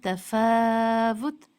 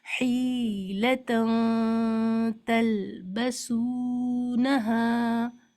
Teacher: تا میں اخفا لائٹ ہے، غنہ لائٹ ہوگا. جیسے تفاوت، اس میں آپ دیکھ رہے ہیں نون ساکن کو مثال بنایا گیا ہے، تفاوت.